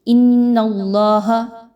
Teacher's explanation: نون مشدد ہے، حمزہ اور نون کو ملاتے ہوئے مضبوطی کے ساتھ آپس میں ملائیں گے. ان اللہ، اللہ کو پر پڑھیں گے کیونکہ اللہ سے پہلے والے حرف نون پر زبر آ رہا ہے.